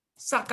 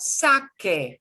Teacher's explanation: instead of an ah ah it'll be an a sound